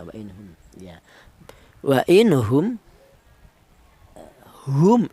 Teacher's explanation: ada mim mati di mana mim mati ini berjumpa dengan hamzah dibaca izhar syafawi yang dibaca jelas ini mim matinya